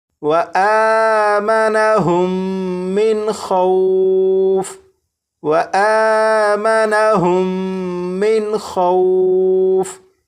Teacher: یہاں پر میم ساکن کے بعد دوسری میم ہے تو یہاں پر غنہ کر کے پڑھیں گے. یہاں پر نون ساکن کے بعد خا حروف حلقی میں سے ہے تو یہاں پر نون ساکن کو ظاہر کر کے پڑھیں گے.